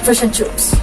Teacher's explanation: The short I is flattened and sounds like U.